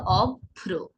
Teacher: দুইবার আসছে ভ, অর্থাৎ একটু জোর দিয়ে উচ্চারণ করলে হয়ে যাবে অভ্র